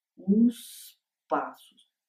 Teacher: a realização desse último segmento do artigo, como ele vem antes de um vocábulo que começa por uma consoante surda, ou seja, menos sonora, ele vai se realizar surdo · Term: realizei surdo